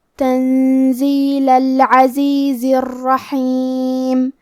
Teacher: کلمت العزیز میں آخری میں زے کے نیچے زیر ہے تو ہم زیر کو ظاہر کریں گے. کلمت الرحیم میں را پہ تشدید ہے تو ہم 2 حرف کے برابر را کو پڑھیں گے